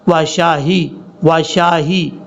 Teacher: ایمانہم وشاہدو، یہاں پر شین کے بعد جو ہا ہے یہ ہا بھاری ساؤنڈ کے ساتھ پڑھا جائے گا اور سینے سے اس کی آواز نکلے گی